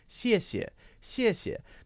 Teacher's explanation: Now that shh sound might be it's something in Chinese, for example, if someone says 谢谢. Notice that it's that same basic sound of air moving through your teeth, but the tongue position is slightly different, and it sounds a little lighter and thinner.